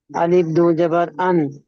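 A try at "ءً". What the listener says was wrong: আলিফ হবে না হামজা হামজা দুবার আনবা দুবার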